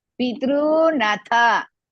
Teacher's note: P is Risva. Tru Dirgha. You have to drag little.